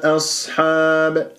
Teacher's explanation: همزة ساكنة همزة مفتوحة مرققة جاء بعدها صاد ساكنة مفخمة مرتبة رابعة من أحرف الصفير يجري فيها الصوت والنفس